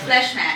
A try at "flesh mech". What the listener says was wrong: Fleshmech. It sounds like it's not split up as flesh and mech. It sounds like fleshmech. Fleshmech.